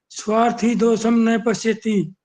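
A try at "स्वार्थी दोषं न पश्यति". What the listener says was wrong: न जरूर बोलोगे, ना नहीं बोल सकते। स्वार्थी दोषम न पश्यति। तो नहीं बोलना होता ना, इसीलिए तो पूछा है, इसीलिए नंबर काटने थे ना। न बोलोगे नंबर कटेंगे।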